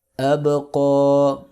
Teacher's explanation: حمزہ زبر با اب، قاف کھڑی زبر قا، اب قا. با پہ کلکلہ کریں گے، قاف کو موٹا پڑھیں گے